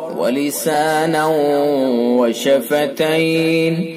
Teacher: تنوین کے بعد یا و میم نون میں سے واو تو ادغام ناقص ہوگا، ادغام ناقص بلا غنہ